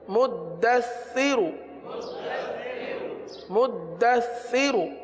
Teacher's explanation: سا میں سیٹی کی آواز نہیں آتی، سا میں زبان کا سرا اوپر کے دانتوں کے اندرونی کنارے پر لگتا ہے